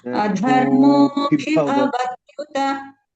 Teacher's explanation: You have to just elongate that mo, then both will come as mahapranas.